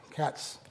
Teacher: there's a hissing sound, but there's no voicing. So that's not a Z sound, it's an S sound. So that's not plus voiced, it's minus voiced.